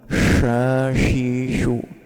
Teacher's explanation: Ah, yang tidak tepat jika condongnya ke huruf syin yang titik tiga. Yang mana syin itu makhrajnya tidak dari rongga antara gigi dari atas dan bawah, tapi dari tengah lidah